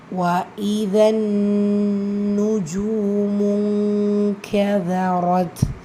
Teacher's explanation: நூன்ல ஷத்தா இருக்குறதுனால குன்னா செஞ்சு ஓதணும்